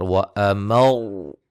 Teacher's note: وقف کی صورت میں جیسے کہ مشدد را، دو حرف کی دیر لگا کر